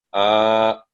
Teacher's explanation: इसको फतह की निस्बत दुगुना लंबा किया जाता है, यानी इसकी अदायगी के लिए तकरीबन 2 सेकंड का वक्त काफी होता है। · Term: खड़ी जबर